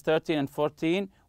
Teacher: we stress the first syllable when we are counting